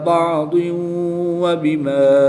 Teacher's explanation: دو زیر کی تنوین کے بعد واو حروف معلوم میں سے ہے تو یہاں پر ادغام مع الغنہ ہوگا، غنہ کر کے پڑھیں گے